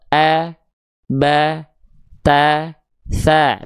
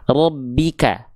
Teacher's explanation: Karena huruf ro ketika dia berharokat fathah harus dibaca dengan karakter pelafalan yang tebal. Huruf yang tebal itu ketika dia berharokat baris atas atau fathah, dia tidak akan terdengar seperti vokal A, tapi dia akan terdengar seperti vokal O.